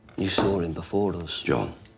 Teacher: with both R's, he's tapping them a little bit. So a bit like how you would make a D, duh.